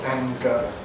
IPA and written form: ˈæŋgə (anger)